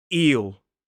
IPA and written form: iːl (eel)